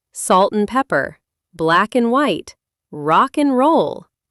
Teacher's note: In 90% of casual conversations, and loses its A and its D. It just becomes an N sound.